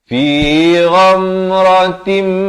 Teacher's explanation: di sini masuk berserta dengung, daripada ghamratin jadi ghamratim, sempurna dua harakat, terus masuk min, dan masuk saja min, jangan panjang.